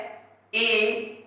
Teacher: ई, ये जीभ के अग्र भाग से है और मुंह के संवर्त भाग से